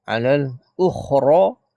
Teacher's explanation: kha tu mati kena sebut getarkan dia punya di kerongkong kita.